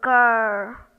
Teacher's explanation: the R in girl is not pronounced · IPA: ɜ